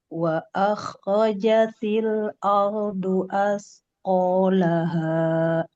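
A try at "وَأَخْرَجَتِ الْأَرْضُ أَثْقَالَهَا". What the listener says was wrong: Wa akhrajatil, ini juga tebal. Wa akhrajatil ardu asqalaha.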